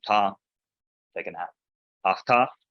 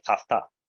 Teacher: there's an elision. That 2 words are jammed together because it sounds nice that way.